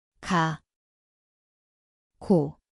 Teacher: It sounds like G/K. The place is the back of the tongue.